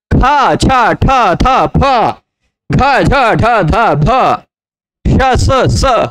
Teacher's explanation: इन 14 वर्णों के उच्चारण में, 14 व्यंजनों के उच्चारण में थोड़ा प्राण ज्यादा निकलता है, इसलिए ये महाप्राण है।